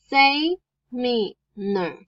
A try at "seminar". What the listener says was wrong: No, not say.